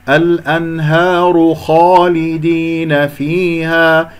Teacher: الخاء مفخم مرتبة أولى لأنها مفتوح بعد ألف، كسر اللام والدال جيدا، فيها كسرة الفاء، لا تقول فيها، فيها خطأ، في، فيها، فيها، ونقف بالمد الطبيعي، مقدار حركتين ألف ساكن قبلها مفتوح.